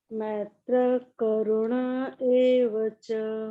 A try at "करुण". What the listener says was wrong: हाँ, करुणा नहीं मैम, करुण, करुण एव च। मैम आपका करुणा आ रहा है, आप इसको कोशिश करिए ठीक करने का।